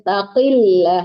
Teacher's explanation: Lam Allahnya ditipiskan karena sebelum lam Allah dia berharakat kasrah atau baris di bawah.